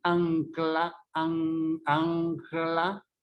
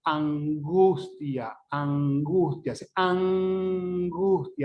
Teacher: La lengua no llega a tocar en los alveolos como es natural. Es decir, que este es sencillo, pues. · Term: se velariza